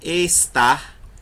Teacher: Você não tem uma antepenúltima sílaba porque a palavra só tem duas sílabas, tá? Mas quando você fala a palavra estar, o tar é mais forte. Logo, o tar, a sílaba tônica, é a última.